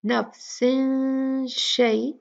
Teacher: नफ्सिन जो है हम शीन के मखरज तक पहुंचेंगे गुन्ना करते हुए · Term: इख्फा